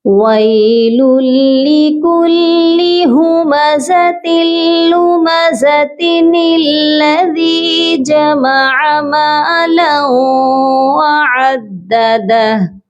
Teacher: نون کو ہم نے لام کے ساتھ ملا کر اس کو پڑھا ہے. ٹھیک ہے، تو اب یہاں پر آپ دیکھیے نون جو ہے آیت کے درمیان میں ہے، یہاں پر کوئی وقف بھی نہیں ہو رہا ہے، تو اس نون کو ہم لازمی پڑھیں گے کیونکہ ہم یہاں پر سٹاپ تو کر نہیں سکتے نا. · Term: نون قطنی